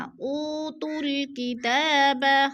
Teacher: او پہ وہ مدہ ہے، وہ مدہ کو ایک الف دو حرکات کے برابر ہم نے کھینچ کر پڑھنا ہے۔